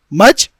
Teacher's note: مجراہا، بسم اللہ مجراہا، اسی میں ہم امالہ پیدا کرتے ہیں۔ یہ جو الف ہے اس کو ہم یا کی جانب لے کر جاتے ہیں